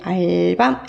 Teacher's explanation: 접두사랑 붙어질 때 알밤 해서 밤은 짧은 소리가 되네요